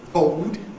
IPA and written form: bɔʊd (board)